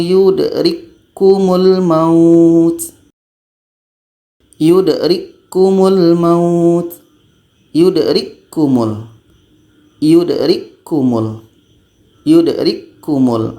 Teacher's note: k-nya tidak berangin lagi karena bunyi k yang pertama ini masuk kepada bunyi k yang kedua